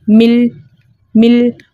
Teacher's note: اب 2 کلموں میں 3 ساکن جو ہے ایک ساتھ جمع ہو گئے، اس لیے یہاں پہ اجتماعی ساکنین فی کلمتین کے 6 طریقے کے مطابق ہم پہلے ساکن کو زیر دے کر پڑھیں گے، یعنی ہم نے میم کو زیر دے کے پڑھنا ہے، حمزۃ الوصل درمیانی کلام میں آنے کی وجہ سے حذف ہو گیا، تو ہم یہ میم کو لام کے ساتھ ملا کر پڑھیں گے